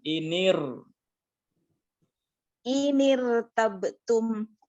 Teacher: ro sukun ya, mulutnya atau bibirnya kita majukan ke depan. Inir. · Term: suara tebal